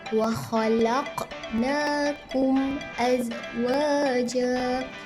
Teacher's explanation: mim sukun bertemu dengan huruf alif, dia tidak dengung dan perlu dijelaskan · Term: izhar syafawi